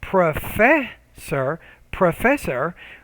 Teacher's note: word stress right so when you say professor professor right so that second syllable needs to be clearer louder longer and higher pitched